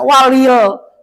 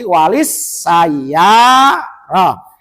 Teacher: Walil sayaroh seharusnya tulisannya gitu memang. Sebab kedepannya sinnya ada musadah, maka jangan dibaca walil, tetapi walis sayaroh. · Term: Alif lam samsia